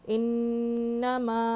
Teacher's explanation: انما، انما نہیں پڑھیں گے، انما جلدی پڑھنا ہے، نون پہ تشدید ہے، غنہ کریں گے، پھر یہ مد منفصل ہے، اس کو ہم 2.5 الف تک کھینچیں گے